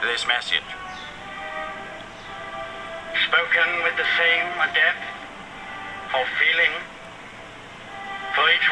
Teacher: for the general British, it has a very wide pitch movements, meaning it has dramatic rise and falls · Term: intonation